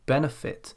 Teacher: In this case it's process. Again, the verb benefit, we stress the first syllable, benefit